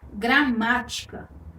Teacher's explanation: Perceba que a sílaba tônica está aí na antepenúltima posição, na sílaba má. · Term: proparoxítona